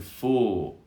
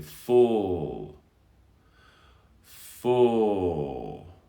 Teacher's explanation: The next one is as in full, and this is a deeper sound, a bit deeper. Your lips are also rounded, but not quite to the extent as in ooh. So you have full, it's a darker, deeper sound.